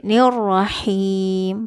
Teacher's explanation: Karena ha ini adalah tenggorokan tengah ya